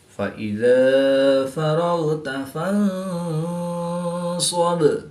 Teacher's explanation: با ساکن ہے تو یہاں پر وقف کی حالت میں قلقلہ صغریٰ کر کے پڑھیں گے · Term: قلقلہ کبریٰ